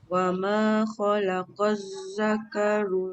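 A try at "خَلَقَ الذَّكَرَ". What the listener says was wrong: Zal keluar tak ujung lidah? Khalaqaz. Khalaqaz. Bukan lam. Bukan lam, zal.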